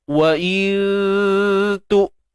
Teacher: Wa in tu. Wa in tu nun mati bertemu ta ikhfa hakiki. Baik, ta ni huruf nipis, so dengung nipis juga